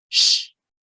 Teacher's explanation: El verbo wish. El último sonido es sh. Sh. Ahí no hay vibración.